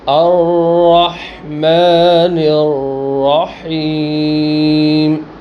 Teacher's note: توسط کی وجہ سے آواز کو ٹھہرائیں گے اور تقریر کی وجہ سے آواز کے اندر ہلکا سا راشا ہوگا، بہت ہلکا سا